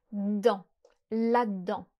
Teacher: When we use the word là-dedans, which means inside or simply in something, you can often contract the E from it, which will become: d'dans, là-d'dans. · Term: contractions